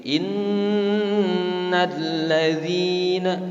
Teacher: kalau ada nun bertasydid harus diingat langsung, oh ini gunnah. Cara membacanya harus didengung, ada penahanan dulu ya.